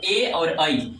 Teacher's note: कंठ और तालू दोनों की सहायता से जो वर्ण निकलता है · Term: कंठ तालव्य वर्ण